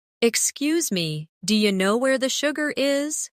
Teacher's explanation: Notice how do you changes to dia.